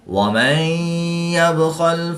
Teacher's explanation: نون ساکن کے بعد یا حروف غیر معلوم میں سے ہے تو یہاں پر ادغام مع الغنہ ہوگا، یہاں پر بھی غنہ کر کے پڑھیں گے.